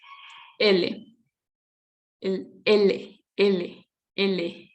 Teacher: El aire sale por los lados de la boca. L. Un modo de articulación lateral.